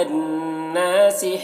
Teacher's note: نون مشدد غنہ ہوگا اور الف مدہ ہے یہاں پر